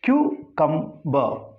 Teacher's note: This final R is to be silent when the word is said in isolation.